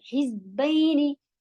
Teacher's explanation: जा buzzing sound के साथ और हा हलक से